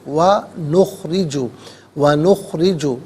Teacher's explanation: را کے نیچے زیر ہے، را کو باریک کر کے پڑھا جائے گا